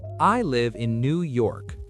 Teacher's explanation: 2 stress points here. The in is super weak. It almost disappears.